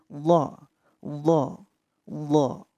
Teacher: Tepi lidah bertemu dengan geraham atas.